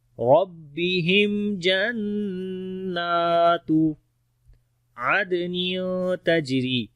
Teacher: دال کے اوپر قلقلہ کریں گے، قلقلہ والا حرف ورڈ کے بیچ میں آ گیا، کمزور قلقلہ ہوگا